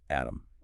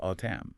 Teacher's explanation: The d sound softens into a t which is a very standard shift >> but the overall skeleton of the word is identical.